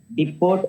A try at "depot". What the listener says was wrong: Yeah, depot. That's you should not pronounce as depot. The T is silent here. Depot. So depot.